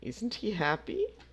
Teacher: listen to the rising intonation and practice this pattern where we have the to be verb